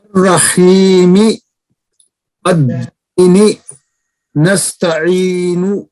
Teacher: حروف مدہ یا میں مد طبی کی جاتی ہے، اس کی مقدار 2 حرکتوں برابر ہے، اور اس کے بعد نہ حمزہ اور نہ سکون ہے.